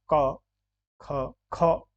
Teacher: क्योंकि ख ज़्यादा हवा निकल रही है, ये महाप्राण है।